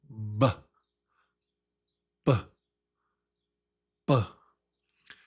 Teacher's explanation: The lips are together and then pop them open. You pop them open with your voice.